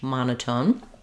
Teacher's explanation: we have first syllable stress in monotone